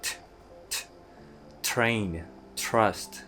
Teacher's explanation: with a strong unvoiced consonant with a puff of air